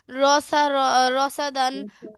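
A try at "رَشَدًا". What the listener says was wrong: না না, এটা সা না, খেয়াল রেখে পড়ো । শিন, তাহলে কি হবে?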